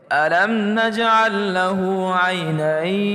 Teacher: یا ساکن اس سے پہلے زبر ہو، یہ وقف میں آ رہا ہو، تو اس کو ہم لمبا کر کے بھی پڑھ سکتے ہیں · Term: حرف لین